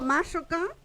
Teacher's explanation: Esta sí sigue la regla del acento. La segunda sílaba es abierta, entonces acentúo la primera. Por eso mashoka no lleva tilde, porque mashoka sí está obedeciendo a la regla, ¿ya?